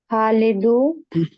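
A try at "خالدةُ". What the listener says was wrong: খালিদু নাকি খালিদাতু লেখা কোনটা? খালিদাতু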